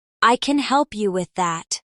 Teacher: In the sentence, I can help you with that, the main stress usually falls on help and that. The other words are softer and quicker. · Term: sentence stress